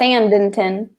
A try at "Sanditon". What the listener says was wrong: No, Sanditon. There's no N in the middle. Sanditon.